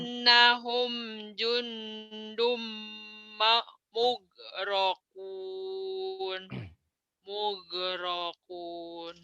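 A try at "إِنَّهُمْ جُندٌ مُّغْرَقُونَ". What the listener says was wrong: Innahum jundum mughraqun. Bagus.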